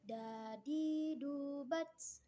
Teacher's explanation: keluar dengan cara menyentuhkan ujung lidah ke gusi bagian atas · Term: huruf Dal